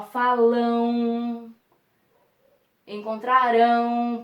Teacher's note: O AM e o EM no final das palavras, eles têm um som diferente, porque o M aqui, ele tem um som de U